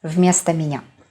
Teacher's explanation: O is not stressed. That's why it is a.